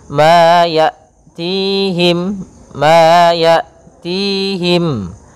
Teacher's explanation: Pada lafal hamzah ini usahakan sifat jaharnya tampak. Hamzah itu punya 2 sifat, yang pertama sifat jahar, yang kedua sifat syiddahnya. Maka dia tertahan nafasnya, tertahan pula suaranya.